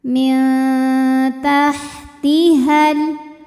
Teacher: nunnya dibunyikan samar-samar menuju ta disertai bunyi dengungan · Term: ikhfa aqrab